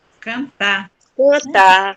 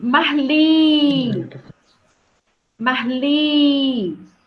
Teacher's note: no final da palavra ele traz a força para última sílaba a sílaba mais forte é a última sílaba então é uma palavra oxítona